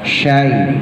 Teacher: shinnya tebelin. Ujung lidah taruh di langit-langit yang keras.